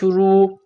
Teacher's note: را کو موٹا کرنا ہے، را کے اوپر پیش ہے۔ نورانی قاعدے میں ہم بتلا چکے ہیں کہ را کے اوپر جب زبر یا پیش آ جائے تو را کو موٹا کرنا ہے، اور را کے نیچے جب زیر آ جائے تو را کو باریک کرنا ہے۔